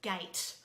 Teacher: So the word gate, you can hear the G, you can hear the A, the long A vowel sound, you can hear the T, which is the T sound, but you cannot hear an E because the E is silent.